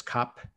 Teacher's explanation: The most popular way of saying that is cop, just completely dropping the R